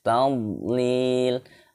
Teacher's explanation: Hum fi tadlil. Tadlil huruf dhad tidak memantul, bukan termasuk huruf qalqalah